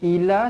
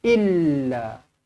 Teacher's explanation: pastikan lam kita baca sabdu illa, bukan ila.